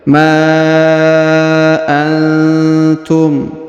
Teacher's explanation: Huruf nun sukun bertemu ta, maka didengungkan dan disamarkan